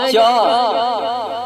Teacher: जब च कहे तो बीचों बीच आपका जीभ और तालु सटता है